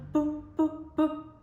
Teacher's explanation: La P, que es un sonido como que explota, la representamos con estas burbujitas que hacen pu, pu, pu.